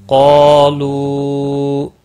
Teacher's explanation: قالوا قاف اور الف دونوں پور پڑے جائیں گے۔ قاف مستعلیہ ہے، پور پڑا جائے گا، عارضی پورا ہے۔